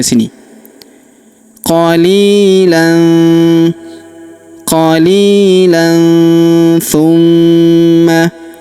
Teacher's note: maka tanwin an-nya melebur ke huruf thu. Kita baca dengung dan samar. Dengungnya kita tahan 2-3 harokat.